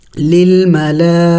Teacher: دیکھیں پہلے لام پڑھیں گے پھر کڑی زبر پھر مد، لام کڑی مد زبر لا۔ دیکھیں مد ہے اور مد کو 5 الف کے مقدار کھینچنا ہوتا ہے، لمبا کرنا ہوتا ہے، اور اس کے اوپر کڑی زبر بھی ہے۔